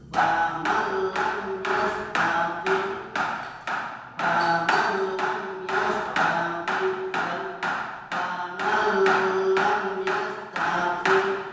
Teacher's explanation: Nun yang bertemu lam, bikin nunnya seperti lam. Jadi langsung masuk seperti lamnya di tasdid, hanya ditekan. · Kalau faman lam itu ada nilainya guna, namanya bila guna tanpa mendengung pasti satu ketukan. Dibaca nunnya masuk ke lam karena dibaca idgham.